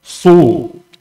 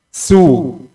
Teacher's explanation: Lidah, pangkal lidah naik ke langit atas jadi suara keluar tebal. Pangkal lidah turun di dasar mulut jadi suara keluar tipis.